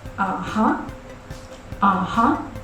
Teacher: It has a low sound. It goes down before coming up again. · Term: tone 3